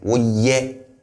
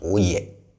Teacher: So the ye here is high toned, right? Woye, not oye.